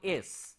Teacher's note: whenever we are saying s we are not using our vocal cord for that